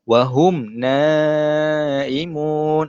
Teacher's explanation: huruf mim yang ada tanda mati tuan-puan, jadi bacaan dia ialah jelas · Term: izhar syafawi